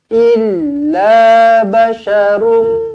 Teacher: Jumpa dengan mim sabdu, terus rapatkan bibir, dengungkan 2 harakat. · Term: Idgham ma'al ghunnah